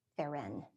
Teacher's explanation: pronounced with the accent on the second syllable, but it's spelled P-H-E-R-E-I-N, pheron.